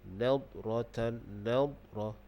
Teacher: Nad tu jangan bagi bunyi qalqalah. Situ dia bukan qalqalah.